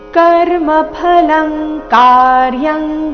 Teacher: अर्धख ರೀತಿ ಅನಾಶ್ರಿತ ಕರ್ಮಫಲಂ ಕರ್ಮಫಲಂ ಕಾರ್ಯಂ ಇಲ್ಲಿ ಎರಡು ಅನುಸ್ವಾರ ಕರ್ಮಫಲಂ ಕಾರ್ಯಂ ಎರಡು ಅನುಸ್ವಾರದ ಉಚ್ಚಾರಣೆ ಕ ವರ್ಗದ ಅನುನಾಸಿಕದ ರೀತಿ ಬರ್ತಾ ಇದೆ